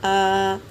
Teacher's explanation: کھڑا زبر برابر ہوتا ہے الف کے، یعنی ایک الف کے برابر کھینچ کر پڑھیں گے۔